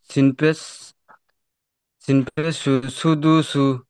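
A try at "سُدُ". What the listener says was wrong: মাশাল্লাহ, কিন্তু টান দেবেন। সিন পেশ সু, দাল পেশ তু, সুদু, সুদু। সিন পেশ সু, তাহলে কি হলো? সুদু সু।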